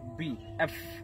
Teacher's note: আমরা ইটাকে ই উচ্চারণ করব, বি এবং পি আমরা দুই জোড়ের সাথে মিলিয়ে পড়বো, বি পি। আর আমরা এফ এবং বি উপরের দাঁত এবং নিচের ঠোঁটের সাথে মিলিয়ে